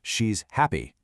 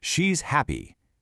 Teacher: See how all the energy is on happy? That's the key information. The she's part is just there to connect things, so it's quick and quiet.